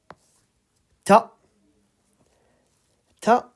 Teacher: You bring the tip of your tongue to the front, the upper front teeth.